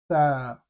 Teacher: the letter tha, you're placing your tongue below your upper teeth